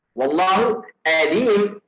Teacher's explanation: a comes from the hollow part of your mouth